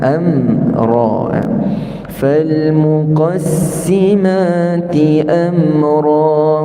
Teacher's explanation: Ti amra kita panjangkan dua harakat.